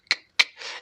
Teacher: este sonido de K, no lo dices con la garganta, simplemente lo dices con la boca, ¿verdad? Tu garganta no vibra. Es un sonido vocal.